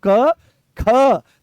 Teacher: तो जैसे ही ख बोलते हो तो पूरे कमर तक इसकी दम निकलता है और यहां से इस वाले हिस्से से यह उठ के चलता है। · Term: महाप्राण